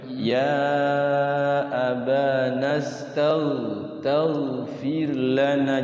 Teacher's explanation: Jadi ghain itu dia lembut ya. Jangan dipantulkan tage atau mage. Jadi mantul enggak boleh.